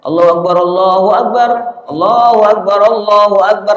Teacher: Ada yang adzan itu lempeng aja